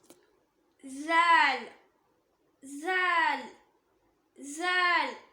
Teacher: மேல் பற்களுக்கும் கீழ் பற்களுக்கும் நடுவுல நாக்கோட நுனி வெளியே வரும்போது உச்சரிக்கக்கூடிய லெட்டர், அதாவது பல்ல விட்டு லைட்டா வெளியே வரணும்.